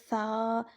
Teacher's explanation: جو ہماری زبان کی سامنے والا جو حصہ ہے، اوپر والا کنارہ جو ہے، یہ اوپر والے جو دانت ہیں ان کے کنارے کے ساتھ لگے